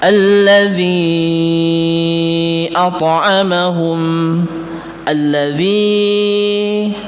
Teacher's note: Akan tetapi khusus daripada alif lam samsiyah yang bertemu dengan lam, maka lamnya dijadikan satu dan hanya diikuti oleh tasdid saja, dan lam yang pertama itu dibuang